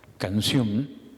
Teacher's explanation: canción se acentúa en la última sílaba y le damos énfasis.